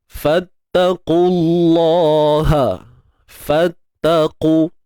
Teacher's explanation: Huruf qaf baris depan, qu tebal. Kemudian terus loncat masuk kalimah Allah ni.